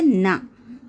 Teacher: நாவின் நுனி மேல்வாய் பல்லின் அடிப்பகுதியை தொடுவதால், பல்லின் அடிப்பகுதியை தொடுவதால் பிறப்பது ந.